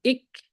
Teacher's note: The same thing with kaf. Tongue will rise, will touch the upper palate, and will make the sound ik,